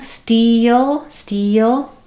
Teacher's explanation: because I have that dark L, the dark L has a bit of a schwa or an sound before it. You may notice that I don't go directly to a light L like steal.